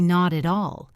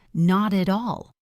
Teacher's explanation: The t becomes a soft d sound in American English and links to the a